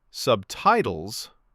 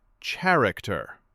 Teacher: Subtitles stress first and character stress first. When the stress moves, the word can sound like something new.